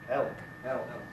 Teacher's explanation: Elk, it's followed by a consonant sound, so it's dark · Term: Dark L